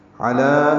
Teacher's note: لام پر کھڑا زبر ہے 2 حرکات لمبا کریں گے